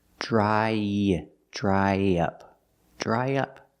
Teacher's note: To link the vowel I, dry, to the short in up, we need a sound in the middle, y.